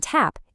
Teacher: Your tongue tip presses against that bumpy ridge right behind your top teeth. For the T and tap, it's just a puff of air, voiceless.